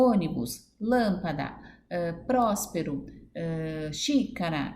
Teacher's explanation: a sílaba tônica é a antepenúltima contando sempre na direita para a esquerda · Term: proparoxítona